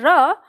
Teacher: तो जब ये अंदर इस तरह से, तो इसे क्या कहते हैं हम कि ये दंत मूल से यानी मसूड़े से अंदर की तरफ लुढ़कती है, इसलिए लुढ़कने से इसको नाम क्या दे दिया? लुंठित वर्ण।